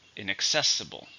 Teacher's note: 5 syllables, stresses on the third.